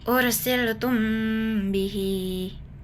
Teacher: mimnya terdengar samar dan berdengung · mim sukun disamarkan dan dengung jangan dibaca jelas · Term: ikhfa syafawi